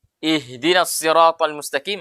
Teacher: hak di situ namanya hak besar, makhrajnya di pangkal tenggorokan